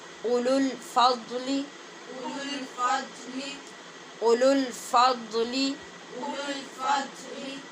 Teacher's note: اس کو جب اگلے کلمے کے ساتھ ملانا ہے تو پہلے والی واو بھی نہیں پڑھی جائے گی، دوسری والی واو بھی نہیں پڑھی جائے گی۔ اولو الفضل، او بھی نہیں پڑھیں گے اور لو بھی نہیں پڑھیں گے۔